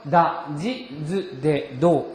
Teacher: 그래서 다, 지, 즈, 데, 도 이와 같이 유성음의 음가를 갖습니다